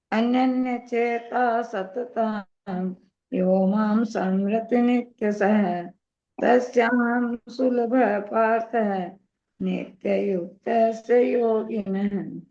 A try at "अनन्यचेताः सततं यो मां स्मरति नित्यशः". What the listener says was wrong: आपने समृति बोला, ये सह पूरा नहीं है। हाँ, स्मृति नित्यशः।